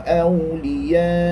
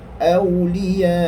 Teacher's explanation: Maka tidaklah dibaca ahu 2 harakat sebab kita dah berhenti. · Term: waqaf